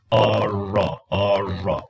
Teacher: in the American R, the tongue doesn't touch the alveolar ridge. The sides of the tongue come in contact with the hard palate. This is why the R is a palatal sound.